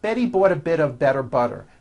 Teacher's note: notice that you do not hear any T sounds